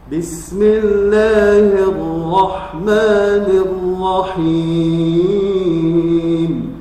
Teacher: sifat ra ini selain dia tawassut adalah memiliki sifat takrir. Artinya bergetar 2 kali, tidak berlebihan.